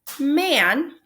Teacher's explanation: explains the pronunciation of the a-phoneme in words like man where the a is followed by an n and that sound travels up the nose and it becomes nasalized